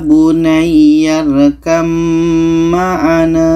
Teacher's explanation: Ba ini kita tidak baca lagi karena terus masuk ke mim ya bunyarkam maana ini untuk idgham mutajanisan yang ketiga idgham mutaqaribain · Maka bunyi ba ini terus kita masukkan ke mim. Oke, bunyi ba ini tidak kita baca lagi. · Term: ba bertemu mim